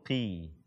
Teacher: Tidak dia seperti qa atau qu. Derajat ketebalannya ketika dia kasrah itu turun.